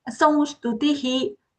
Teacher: That dental sa is coming there.